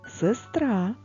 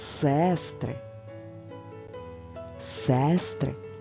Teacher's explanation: звук е не наголошений тож промовляємо його ближче до и